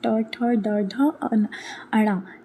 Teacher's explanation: ट बोलने में आपकी जीभ क्या होती है? पलट जाती है। तो इसको बोला जाता है मूर्धा। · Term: मूर्धन्य